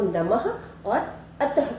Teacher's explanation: जब हम इन शब्दों को पढ़ते हैं तो आखिर में ह की ध्वनि सुनाई देती है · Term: विसर्ग